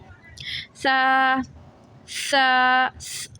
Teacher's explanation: اس سا میں سیٹی کی آواز نہیں آتی. سا اور نرمی سے پڑھا جائے گا. زبان کی نوک دو اوپر والے دانتوں سے لگے گی، ٹچ ہوگی